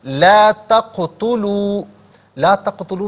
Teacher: قاف ساکن ہوگا، لیکن آواز یعنی ادائیگی میں جنبش محسوس ہو، اس طرح اس کی ادائیگی کرنی چاہیے کہ قلقلہ ہے، یہ قلقلہ ہوگا۔